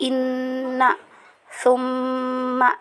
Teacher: cara membacanya yaitu dengan guna dua harokat ya, baik ketika wasol maupun wakof.